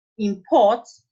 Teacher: But when you say import, the stress has shifted from the first syllable to the second syllable.